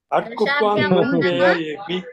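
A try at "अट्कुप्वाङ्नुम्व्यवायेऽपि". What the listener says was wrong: వ్యయ కాదు, వ్యవాయేపి. వ్యవా.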